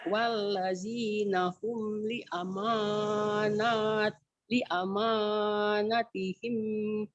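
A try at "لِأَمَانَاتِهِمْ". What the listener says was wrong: Nanya juga panjang, Bu.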